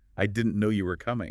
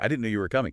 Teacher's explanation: But now try it with a little lift, a little emphasis on no and coming like I didn't know you were coming.